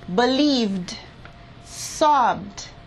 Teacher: Well, the last sound of believe is a V, and the last sound of sob is a B. When I apply the ed ending to the V and B sounds, I will pronounce them like the phonetic symbol d.